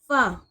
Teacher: जब ऊपर वाले दो दांत नीचे वाले होठों के अंदरूनी हिस्से से लगे जब फ अदा होगा। · فا جب اوپر والے دو دانت نیچے والے ہونٹوں کے اندرونی حصے سے لگیں، جب فا ادا ہوگا